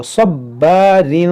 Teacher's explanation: یہاں صاد حروف مستعلیہ ہے, اس کو موٹا پڑھیں گے, اور با حروف قلقلہ ہے اور مشدد ہے تو خوب جماؤں کے ساتھ پڑھیں گے اس کو.